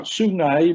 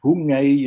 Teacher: That is the one of S becoming H.